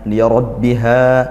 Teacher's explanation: Wainat ta sukunnya ditunaikan sifatnya liarbiha rnya ditebal tebalkan tafkhim karena dia fathah